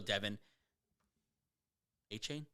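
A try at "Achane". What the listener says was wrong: A-Chan. Devin A-Chan. It sounds like A-Chain because that sounds cooler, but I think it's pronounced A-Chan.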